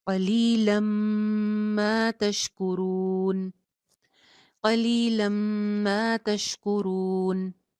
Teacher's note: لام کی ایک زبر کو میم کے ساتھ جوڑ رہے ہیں اور غنہ کر کے ادغام کر رہے ہیں